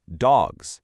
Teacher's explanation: if you have more than one dog, you still add an S, but it magically turns into this buzzing Z sound